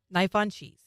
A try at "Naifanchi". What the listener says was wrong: Not cheese. Naifan Chi. Or Nahanchi is the American way of saying it.